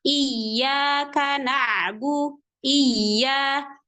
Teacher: Di sini pada lafaz iya, ya-nya bertasydid. Maka ketika membaca di situ harus dihentak, ditekan, dinaber namanya. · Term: ya tasdid